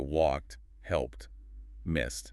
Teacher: the ed sounds like t.